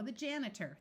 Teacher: o r at the end of a longer word usually says r instead of a clear or sound